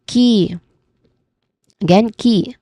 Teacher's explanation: it starts with a letter K sound or C sound and it is then ending with a long e vowel sound because as you can see on the IB transcription, the vowel sound here is paired with a colon sound.